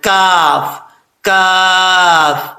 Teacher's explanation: اس کا مخرج زبان کی جڑ اوپر والے تالو کے سخت حصے سے لگے تو کاف پڑھا جاتا ہے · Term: بریک کاف